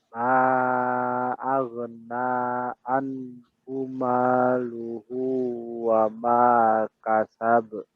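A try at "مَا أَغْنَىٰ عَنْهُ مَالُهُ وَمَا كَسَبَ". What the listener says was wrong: Aghna anhu. Anhu. Jelaskan ainnya.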